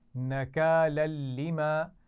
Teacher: لام پر تنوین ہے اور اس کے بعد پھر لام آ گیا ہے تو یہاں پر غنہ نہیں کریں گے، ملا کر تو پڑھیں گے لیکن غنہ نہیں ہوگا.